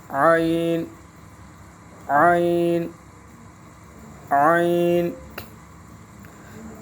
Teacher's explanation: عین عین گلے کے درمیان سے، حلق کے درمیان سے